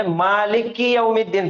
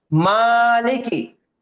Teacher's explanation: بہت سارے لوگوں کو پڑھتے ہوئے سنا میں نے، مالک کی یوم الدین پڑھتے، کاف کو ڈبل ادا کرتے. تو ڈبل ادا نہیں کرنا ہے کیونکہ وہاں پہ تشدید نہیں ہے